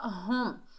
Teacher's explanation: میم ساکن سے ملائیں گے، ہا جو ہے سینے سے ادا ہوگا، بھاری ساؤنڈ سے ادا ہوگا